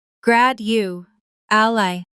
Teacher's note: four syllables, stress on the first.